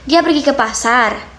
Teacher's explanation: Nah, tapi dengan syarat ketika kita melafalkan kalimat tanya tersebut dengan intonasi yang lebih tinggi atau berbeda dengan kalimat pernyataan tadi.